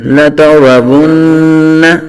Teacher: نون مشدد کا غنہ کیا ہے لیکن نون متحرک ہے تو نون کو کھینچا نہیں ہے ، لا تارا ون، آگے ہا الف زبر ہا، یہاں الف